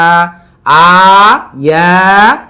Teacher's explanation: আ হলো কণ্ঠনালী নিম্নগত থেকে, ইয়া হলো জিহ্বার মধ্যখান থেকে,